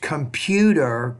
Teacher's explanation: Put stress on that second syllable.